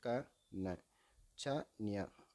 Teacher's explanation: இவை முதல் அண்ணத்தை தொடுவதால் உண்டாகிறது. · இடை அண்ணத்தை தொடுவதால் உண்டாகிறது.